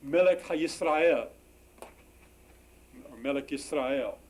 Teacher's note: So what happens in the construct singular is that it loses the accent, but there are no vowels that need to be reduced here.